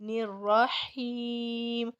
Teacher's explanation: الرحیم کہتے ہوئے ناک میں آواز نہیں جائے گی